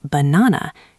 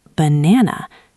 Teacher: The first and the last a are not really a sounds at all. They are schwas. They are very short and very quiet. The only part of the word that is clear and strong is the middle part.